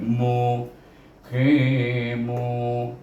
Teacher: mim baris depan bertemu dengan waw juga, iaitu sebelum waw baris depan kena baca dengan mat asli juga